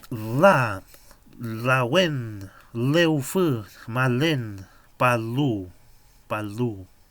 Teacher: Sin embargo, esta L es interdental. Es como una mezcla de una L y una D. Pero igual es bueno asociarlo con eso para empezar a aprenderlo de forma más fácil.